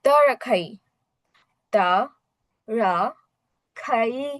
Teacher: যেহেতু দুটাই third tone আছে, আমরা একবার উপর থেকে নিচের দিকে যাবো, দেন নিচে থেকে উপরের দিকে